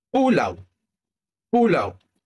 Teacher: lidah akan bergerak ke belakang dan naik sedikit dan bibir akan dimuncungkan bulat ke depan. U aliran udara akan keluar secara berterusan tanpa tersekat. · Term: diftong au